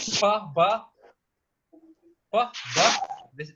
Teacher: So bilabials, but B means two, labial means lips. So it means that this sound is produced by contacting our both lips.